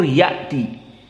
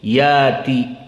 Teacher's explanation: Adapun qiraah wars diganti menjadi mad, hamzahnya dihilangkan jadi mad. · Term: ibdal